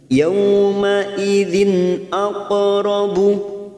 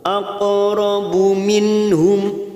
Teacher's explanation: ada huruf qaf sukun karena mati asli di tengah kalimat. Jangan lupa dipantulkan